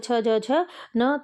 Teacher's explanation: च छ ज झ न तो ये आपकी तालव्य ध्वनि आती मतलब तालू से जिनका उच्चारण किया जाता है